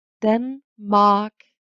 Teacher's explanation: So the R creates a special sound for the vowel and creates kind of a diphthong.